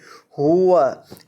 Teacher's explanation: قال اتستبدلون الذی هو ادنی، ہوا کیا پڑھیں گے اس لفظ کو، ہوا ہا کے اوپر پیش ہے، اور یہ جو ہا ہے اس کو حلق کے آخری حصے سے جو سینے کے ساتھ متصل ہے وہاں سے ادا کریں